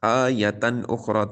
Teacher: سوء آیتن اخری، حروف مدہ کے بعد حمزہ اسی کلمے میں، یہاں پر بھی مد متصل ہے۔ آیتن اخری، تنوین کے بعد حمزہ حروف حلقی میں سے ہے، تو یہاں پر بھی اظہار ہو رہا ہے